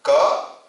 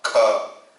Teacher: Less energy, more energy. Mahaprana.